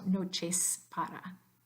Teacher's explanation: So that S at the end of noches stays as the voiceless S sound, so noches para.